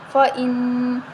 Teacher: اب یہاں نون مشدد ہے اس پر غنہ کریں گے